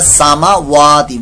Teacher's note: واو کو لمبا کر دیتے ہیں، میم کو نہیں کرتے